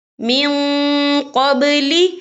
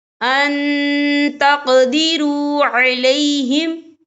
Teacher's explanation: نون ساکن کی آواز کو ناک میں چھپائیں گے. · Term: اکفا